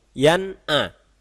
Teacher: jelas Hai contohnya Yan a bukan ia tapi Yan ah nun sukun terbaca dengan sangat jelas dan tegas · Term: izhar